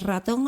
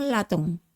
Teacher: los chinos tienen mucha dificultad en pronunciar la r y siempre la convierten en l